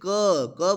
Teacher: लेकिन क अकेले नहीं है क के साथ अ देखिए क क बोलोगे तो पहले क आएगा लेकिन लास्ट में अ निकलता है